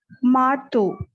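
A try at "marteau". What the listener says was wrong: Très bien. Very good.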